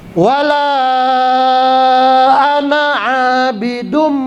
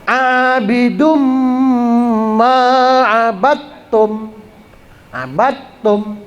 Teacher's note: Abidum ma'abattum, abattum gitu. Abidum itu ditahan, itu idgham bi gunnah atau idgham ma'al gunnah.